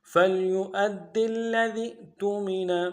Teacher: جھٹکا دیں گے حمزہ میں